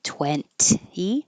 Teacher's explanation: don't have to say the middle T, 20. Just skip it.